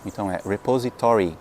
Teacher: A sílaba tônica cai no to.